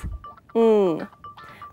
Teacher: To make this sound, bring the back of your tongue up against the velum. Then close the air off completely and release it through the nose